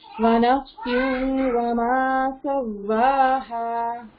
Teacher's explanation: इदगाम with गुन्ना, मर्ज भी हो रहा है और गुन्ना भी हो रहा है। वहां पे तो खाली गुन्ना था ना, यहाँ पे मर्ज करके गुन्ना करना है ना, तो उसको हम इदगाम बोलते हैं, मर्ज करना, मदगम करना।